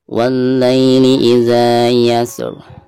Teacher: ketika membaca za maka di sini dihukumi martabai dan dibacanya dua harokat karena ada fathah zal lalu berhadapan dengan alif.